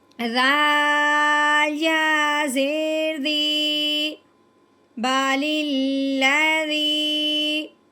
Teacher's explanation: جب یا ساکن ہو اور اس سے پہلے زیر ہو وہ ملنے کے ساتھ ساتھ ایک الف کے برابر لمبا بھی ہوگا